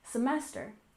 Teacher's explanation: We stress the second syllable in semester, semester.